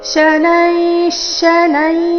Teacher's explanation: विसर्ग उच्चारणे अर्धश ರೀತಿ